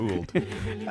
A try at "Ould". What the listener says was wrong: I always say it's old. The U is silent, unlike me.